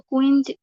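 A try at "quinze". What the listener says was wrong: আচ্ছা হ্যাঁ, এটা উচ্চারণটা হবে হচ্ছে কাঞ্জি হবে, কাঞ্জ। দাঁড়ান আসতেছি, এই যে কাঞ্জ। ওই যে আমরা আপনাদেরকে শুরুতে বলছিলাম আই এন এর উচ্চারণটা হচ্ছে আ, ঠিক তাহলে এইখানে হচ্ছে এই যে কুইঞ্জ হবে না, এটা হবে হচ্ছে কাঞ্জ, ঠিক আছে।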